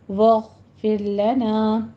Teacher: وعفو وعفو عنا، ان میں غنہ واجبہ کرتے ہوئے آگے نا میں الف مدہ 2 کاؤنٹ کیجیے اس کو بھی. واغفر لنا، غین کو پر پڑھنا ہے، رو باریک ہو جائے گی